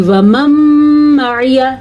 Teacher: یہاں پہ ادغام بالغنہ کا قاعدہ ہو رہا ہے تو یہاں پہ غنہ ہوگا